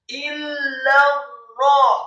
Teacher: Kata illa rahman, alifnya dibaca tipis kasrah 1 harokat, kemudian lam alifnya ditasydidkan fathah 2 harokat. Illa ra, seharusnya dibaca 2 harokat, namun karena setelahnya ada huruf ra yang tasydid, maka lam alif cukup dibaca 1 harokat. Illa ra, kemudian ra-nya ditasydidkan.